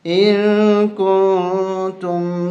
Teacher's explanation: اخفاء ناک میں آواز چھپا کے پڑھیں گے